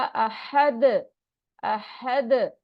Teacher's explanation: अहद, हा का मखरज आपने सही अदा करना है। दाल जब हम स्टॉप करेंगे तो साकिन हो जाएगा, तो रुकते वक्त उस पे कलकला होगा। अहद, अहद। ठीक है, आवाज टकरा के वापस आएगी।